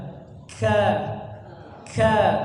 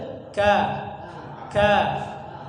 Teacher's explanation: pangkal lidahnya terlalu maju ke depan. Jadi biasanya udaranya berlebihan.